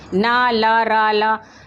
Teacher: मसूड़ों से हमारी जीभ का हिस्सा टकराता है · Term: मसूड़ों की ध्वनियाँ